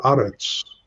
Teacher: But when the word eretz is in pause, and we see it in pause here by the siluk, when it is in pause, the segol is heightened to a kametz